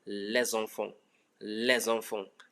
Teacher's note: Now, les enfants, les ends with a consonant S, enfant starts with a vowel E. So there's going to be a liaison that changes the pronunciation of the S from S to Z